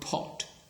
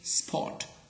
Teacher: whenever we have got pot, okay, so it is aspirated. But when we say spot, okay, so it is not aspirated, okay. Top can be aspirated, but stop is not aspirated, okay. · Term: aspiration